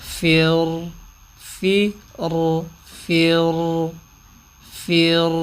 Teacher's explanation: ان میں یہ چند مثالیں ایسی ہیں کہ را ساکن ہے، را ساکن سے پہلے حرف کے نیچے زیر ہے، پھر بھی را کی آواز کو موٹا پڑھا جاتا ہے